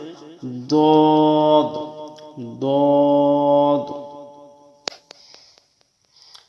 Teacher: জিহ্বার গোড়ার কিনারা উপরের মাড়ির দাঁতের গোড়ার সঙ্গে লাগাইয়া একটি হরফ উচ্চারিত হবে